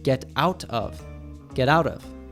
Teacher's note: When a T is between two vowel sounds, it usually morphs into a tap T, which sounds like duh, duh.